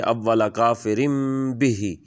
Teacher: یہاں کافرم کے اوپر زیر کی تنوین ہے اور آگے با ہے تو لہٰذا یہاں پر بھی نون کی آواز کو میم میں بدلیں گے